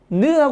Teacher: 혀가 이를 툭 때리는 느가 된 거예요. 그러니까 혀가 때린다는 얘기예요.